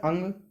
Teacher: अगर पूछा जाए कि अनुस्वार का जो है उच्चारण स्थान क्या है, तो नासिका है। तो अनुस्वार क्या होता है, अंग, तो अनुस्वारस्य नासिका चा।